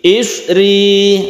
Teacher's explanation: roknya ditipiskan karena berharokat kasroh, tipis artinya tarqiq.